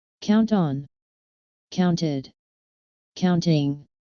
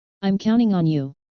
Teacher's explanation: following words without dropping the t count on counted counting now notice that the t is dropped when speaking fast